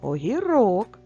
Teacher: так наголос в кінці слова огірок